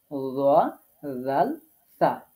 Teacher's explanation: জিহ্বার আগা সামনের উপরে দুই দাঁতের আগার সাথে লাগিয়ে উচ্চারিত হবে